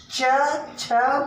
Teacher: च वर्ग जो है तालु है। जब भी हम च छ बोलते हैं तो अंदर तालु को टच करता है